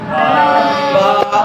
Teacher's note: با بیٹا ہونٹوں کی تری سے ادا ہوتا ہے